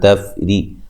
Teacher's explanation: را کو باریک پڑھنا، را کے نیچے زیر ہے